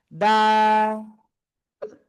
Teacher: জিহ্বার আগা, এই সামনের উপরে দুই দাঁতের গোড়ায় লাগাবেন, লাগিয়ে 1 2 3 আলিফ টেনে পড়তে হবে